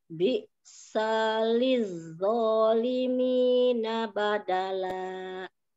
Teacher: Hamzahnya bisaliz seperti disentak.